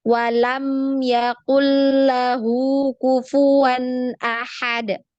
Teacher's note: jadi sama panjangnya mim sukun dengan nun sukun